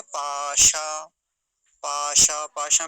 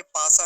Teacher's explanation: पाशा में तालव्य शकार है, इसका ध्यान रखेंगे, पासा नहीं बोलेंगे, पाशा है।